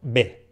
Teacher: la b y la v se pronuncian exactamente igual